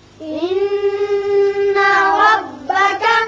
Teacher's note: نون مشدد ہے، اس کو غننے کے ساتھ ادا کریں گے